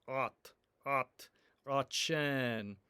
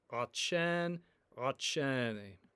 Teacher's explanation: an emphatic T, which makes the vowels around it a little bit cloudy